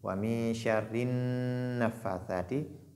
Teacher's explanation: Donc lorsque la nun porte shadda, il faut faire ce qu'on appelle al-ghunna. Al-ghunna qui est c'est-à-dire cette voix qui sort au niveau du nez. Wa min sharri nafathati, qui est de deux mouvements.